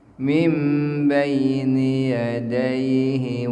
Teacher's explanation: Apabila ada nun mati atau bertemu dengan ba maka dibacanya iklab ataupun n jadi m, nun mati jadi mim.